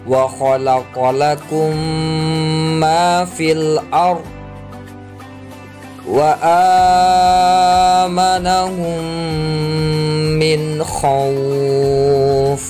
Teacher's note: Idgham mislain atau nama lain dari idgham mimi, yaitu ketika mim sukun bertemu huruf mim. Cara bacanya sama dengan berdengung, tidak boleh idhar, harus berdengung.